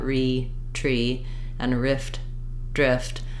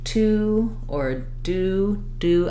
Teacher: my tongue is lifting a little further back for the T and the D than it normally would